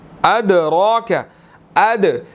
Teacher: دال ساکن ہے، حروف قلقلہ میں سے ہے، یہاں پر ہم قلقلہ کریں گے · را کے اوپر کھڑی زبر ہے، را کو ہم نے موٹا ادا کرنا ہے